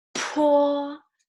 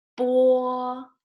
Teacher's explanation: The difference is if you have a paper in your hand, you can try to use the paper to say it to the paper, 波, but it doesn't move. When you say another one, 坡, the paper moves, right? So there is air coming out from your mouth. You say 坡, but 波.